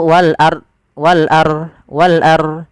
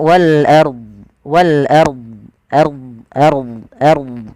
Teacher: Kemudian do-nya ini kesalahan. Nah, kalau kita waqaf pada lafal ini, pada lafal wal ard, itu harus dibaca do-nya